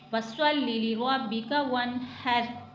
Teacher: जैसे हम कोई ठंडी चीज खाते हैं तो जिस तरह से आवाज हमारे मुंह से निकलती है उस तरह से हमने हा को अदा करना है।